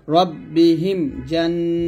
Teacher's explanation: রব্বিহিম এখানে মিম সাকিনের পর জিম থাকার কারণে গুণনা হবে না।